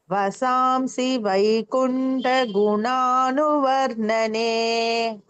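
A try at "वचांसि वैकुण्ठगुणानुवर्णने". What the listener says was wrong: சோ வசாம்சி வராது மாதாஜி வச்சாம்சி வரணும்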